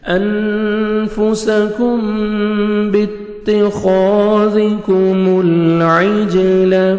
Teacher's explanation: نون ساکن کے بعد 15 لیٹرز میں سے فا آ رہا ہے، یہاں پہ آپ نے اخفا کرنا ہے، نوز میں ساؤنڈ لے کے جائیں گے